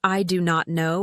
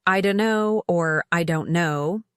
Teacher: For example, listen to how native speakers say common phrases like, "I don't know." Instead of "I do not know" with equal stress on each word, you'll hear "I don't know" or "I don't know" with the stress on don't and know, while I flows quickly at the beginning